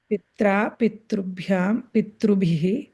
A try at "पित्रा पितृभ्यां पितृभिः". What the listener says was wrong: So pitra, pitrubhyam, pitrubhyam. You don't need to stress.